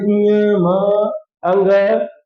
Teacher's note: पंचमाक्षर हैं उन सब का उच्चारण स्थान नासिका से होता है